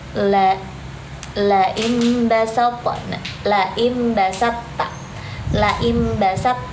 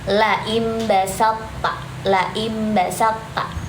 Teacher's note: hurufnya thnya enggak begitu kedengaran tapi lebih ke ta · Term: idgham